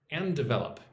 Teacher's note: It's almost like there's only one D.